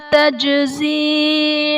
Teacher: یوم اللہ میں میم پر دو زبر کی تنوین، تنوین کے بعد حروف یرملون میں سے لام آ رہا ہے تو یہاں پر ادغام بلا غنہ کا قاعدہ ہوگا، یعنی تنوین میں ہم غنہ نہیں کریں گے۔ تجزی میں جیم حرف قلقلہ ساکن ہے تو یہاں پر قلقلہ خوب ظاہر کریں گے